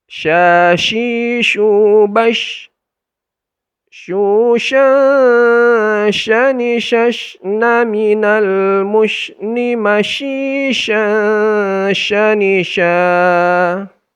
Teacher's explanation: Padahal shin itu bukan huruf bibir, tetapi huruf lidah, khususnya tengah lidah.